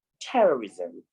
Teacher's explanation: the first syllable in the word terrorism is stressed